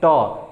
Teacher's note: हवा का प्रेशर हमारे मूर्धा पे टच कर, यानी कि तालु के ऊपर टच करता है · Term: मूर्धन्य व्यंजन